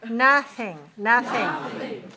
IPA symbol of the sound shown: θ